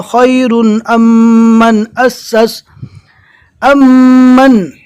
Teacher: پہلے جزم والا میم ہے لہٰذا میم کو چھوڑ دیں گے، الف کو ڈائریکٹ میم سے ملا کر پڑھنا ہے